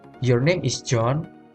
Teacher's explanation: you have rising intonation in high final pitch, and there is indicates a question.